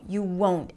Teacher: This is the beauty of the rising, falling pitch that fits in certain situations, like in this one. The won't is a long O as in go. You won't. And even though we don't hear the T very clearly, it is there.